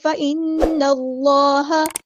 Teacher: فإن اللہ، نون پہ غنہ زمانی دھیان سے کرنا ہے، فإن اسے ناک میں آواز لے کے جانی ہے. فإن اللہ، اللہ کا لام یہاں پہ ہم موٹا ادا کریں گے کیونکہ زبر آئی ہے پہلے، تو آپ نے اس طرح فإن اللہ نہیں فإن اللہ، نون کو ہیوی ادا نہیں کرنا، صرف لام کو ہیوی ادا کرنا ہے.